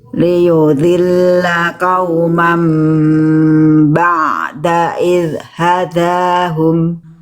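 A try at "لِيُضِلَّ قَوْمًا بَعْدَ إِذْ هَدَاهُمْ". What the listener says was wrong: Itu bagus.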